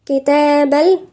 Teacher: إن حرف قلنا مشدد مقدار حركتين. كتاب في هنا ألف صغيرة بمقدار حركتين، مد طبيعي بمقدار حركتين